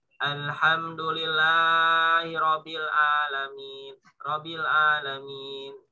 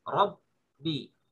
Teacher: Huruf yang bertasdid 2 huruf. Rob, berhentikan dulu, baru bi.